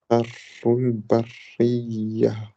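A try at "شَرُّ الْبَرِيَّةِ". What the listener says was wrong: Charrul bariya. Faut que tu donnes plus d'énergie là quand tu fais le bari. Tu vois, le ya. Bariya. Et une remarque aussi, c'était juste les shadda. Bon, on va dire les shadda, quand tu les. C'est plus.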